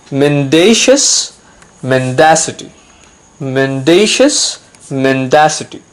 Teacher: Remember, in both the cases, we have the stress on the second syllable.